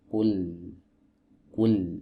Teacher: lam ini adalah huruf yang keluar dari sisi lidah atau tepi lidah bagian depan. Dari sini sampai ke depan sini, ini yang diistilahkan oleh para ulama ahli tajwid dengan istilah muntahal hafah, ya, penghabisan tepi. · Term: huruf lam